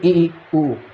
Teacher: जिनके उच्चारण में मुख सबसे कम खुले वो कहलाता है समृद्ध स्वर